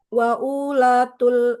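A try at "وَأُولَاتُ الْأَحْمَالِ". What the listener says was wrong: Kok pendek ya? Punya pendek. Wa ula. Nah, wa ulatul ahmal.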